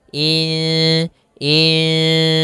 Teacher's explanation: secara bacanya itu nunnya kita samarkan kepada huruf Sin · Maka ada nun sukun bertemu dengan huruf sin, maka kita namakan dengan bacaan ikhfa, yaitu secara membacanya itu nunnya kita samarkan kepada huruf sin, kemudian terdengar suara samar-samarnya insan. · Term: Ikfa